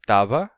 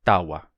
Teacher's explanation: E o som de v, que aparece entre vogais, como na palavra tava, costuma se tornar wa. Então, tava se tornou tawa.